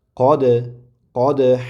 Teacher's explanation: Ho'p dal harfi sukunlik bo'lganida qalqala qilib talaffuz qilinadi. Tebratib ya'ni qalqala.